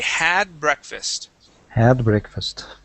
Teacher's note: take out that uh after the D and say had breakfast had breakfast there that's it okay so